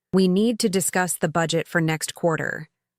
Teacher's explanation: The small words like to, the, and for are said more quickly. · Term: natural rhythm